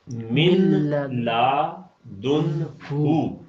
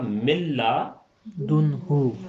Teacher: تو یہاں چونکہ ادغام ہو گیا ہے نون کا لام کے اندر، نون کو لام میں داخل کر دیا ہے، تو اس لیے جب ہم اسے پڑھیں گے تو یہ پڑھنے میں آئے گا ملا دن ہو. · نون بالکل ہی ختم ہو جائے گا.